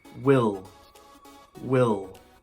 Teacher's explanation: I want to focus on the short I sound. So if you are saying a long E sound, such as wheel, wheel, you are saying it wrong. This is a short I sound.